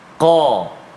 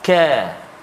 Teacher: ialah qaf, dia ada sifat tebal dia. Qa. Kaf dia tak tebal. Ka. Beza bunyi, kan?